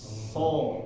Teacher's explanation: Kalau huruf so jangan dinaikin sama sekali, turun semua. Cuma angin ini mulut ini terisi angin ya, tebal. So, kayak angin ada terkumpul.